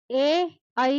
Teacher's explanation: ए ऐ का उच्चारण स्थान कंठ तालु है।